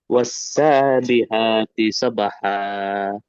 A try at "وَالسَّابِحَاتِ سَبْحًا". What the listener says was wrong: ہا کا مخرج تھوڑا اچھا ادا کریے. والسابحات سبحا.